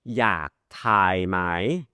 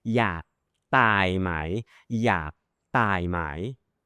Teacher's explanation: อยากทายไหม aspirated. อยากทายไหม the air comes out.